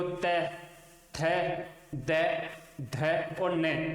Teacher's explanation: इन पांचों व्यंजनों का उच्चारण करेंगे तो जीवा है वो ऊपर के दांतों के अंदर की तरफ स्पर्श करेगी, और क्योंकि श्वास वायु है वो भी जीवा के सारे ही चलती है, तो जहां जीवा स्पर्श करेगी वही श्वास वायु भी स्पर्श करेगी, और फिर श्वास वायु मुख से बाहर निकलेगी।